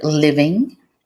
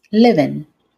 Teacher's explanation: One of the ways that formal English becomes conversational is by dropping the G at the end of the ing words and adding an apostrophe.